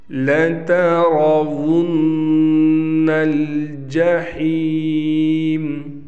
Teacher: را موٹا پڑھا جائے گا تو اس کا خیال کرنا ہے.